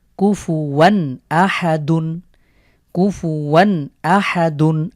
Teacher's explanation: এখানে তানভিনের পরে হামজা এসেছে, আমরা এখানে তাহলে গুন্না ছাড়া স্পষ্ট করে পড়ব